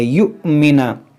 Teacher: دیکھیں یہاں پر حمزہ ساکنہ ہے، اس کو جھٹکا دے کر پڑھیں گے